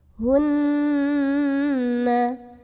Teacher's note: bunyi annya ditahan dulu sampai berasa bergetar halus ke hidung kurang lebih dua harokat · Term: ghunnah musyaddadah